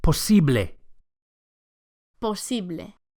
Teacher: And the final E sound, posible, is a pure vowel, not A.